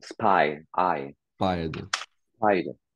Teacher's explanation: Donc, je sais pas si tu as révisé du coup les diphtongues et tout ça, mais donc le AI, ouais, c'est ça. Donc le AI, Ouais. c'est une diphtongue, hein. C'est-à-dire que tu as deux voyelles qui forment un seul son.